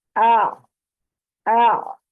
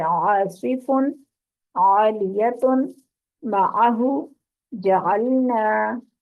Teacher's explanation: عین کی آواز آپ کی درمیان سے، حلق کے درمیان سے نکلنی چاہیے۔